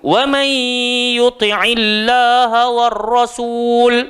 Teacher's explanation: nun mati bertemu dengan ya, jadi hukum dia idgham ma'al gunnah, kena dengung.